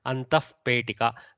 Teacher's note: with a pa and a pha, Mahaprana pha, half visarga will come. So antaf petika, little bit of fa sound will come.